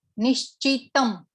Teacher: નિશ્ચિતમ ની ઉપર બી એક ડોટ આપેલો છે, અનુસ્વાર આપેલો છે, તો એ અનુસ્વારનો અહીંયા ઉચ્ચાર મ થશે